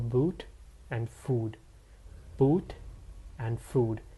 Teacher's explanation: Next, you have long oo's again. This time, your lips need to be fully rounded. The tongue need to be high and back up.